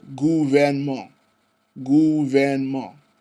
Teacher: en is a nasal vowel, but is not pronounced as a nasal vowel in this case